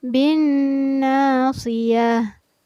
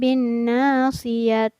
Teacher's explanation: ta marbuto ini apabila berada di ujung ayat, maka cara membacanya seolah-olah dijadikan huruf H yang bersukun. Jadi kedengaran tidak terbaca ta, melainkan terbaca sebagai H.